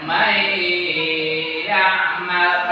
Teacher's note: Contoh, ini nun mati bertemu ya, contoh man, kemudian ya mal. Nah, nun mati bertemu ya tadi harus idghamkan, masukkan, kemudian tambahkan gunnah. Maka dibaca may ya'mal, harus pakai gunnah. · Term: idgham ma'al gunnah